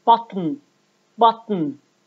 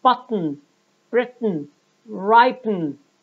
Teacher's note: the airstream leaves through the nose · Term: nasal explosion